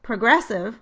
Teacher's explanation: with vowel reduction in the first syllable, I would transcribe the first vowel as schwa and the first syllable would be unstressed.